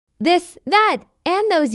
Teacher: use the voice TH sound, where you must vibrate your vocal cords